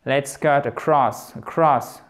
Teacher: Donc on a tendance à tout simplement entendre simplement cross. Et comme ils prononcent vite, évidemment, ça vous donne presque l'impression d'entendre cut cross, en un seul mot quasiment. En fait, la voyelle, si je puis dire, la voyelle au milieu, elle est squeezée en fait.